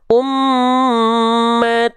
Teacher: ikhfa samarkan dengungkan dua harakat